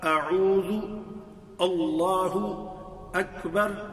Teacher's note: تو یہ جتنی بھی یہ حمزہ آ رہی ہیں ان کا تعلق اقصى الحلق سے ہے